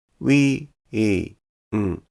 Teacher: the “ウィーン” in “ハロウィーン” is 3 beats in 1 syllable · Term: 3拍1音節